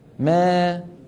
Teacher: الاماله الصغرى يرتفع وسط اللسان قليلا